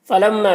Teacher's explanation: فلما میم مشدد ہے، غنہ کے ساتھ میں پڑھیں گے اسے۔ الف مدہ ہے، ایک الف کے برابر کھینچیں گے۔